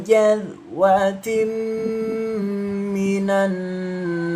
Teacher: Jadi didengungkan dua ketukan karena termasuk bacaan idgham ghunah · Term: idgham bil gunnah